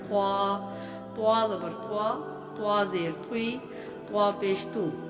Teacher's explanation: لیکن جو طا ہے مخرج تو سیم ہے لیکن منہ بھر کے یعنی موٹا پڑا جائے گا، تفخیم ہوگا حروف مستعلیہ میں سے۔